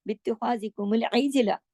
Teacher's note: जीम पे कलकला होगा क्योंकि कुतुबिन जद्दिन का हर्फ है।